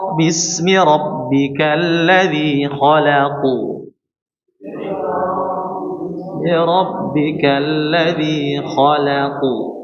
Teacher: Jadi huruf q ini qalqalahnya ditebalkan